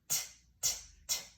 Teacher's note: So there's alveolar sounds that replace the velar sounds in the process of fronting. So k gets replaced with the alveolar sound t.